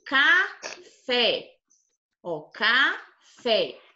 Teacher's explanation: O fé é a sílaba mais forte.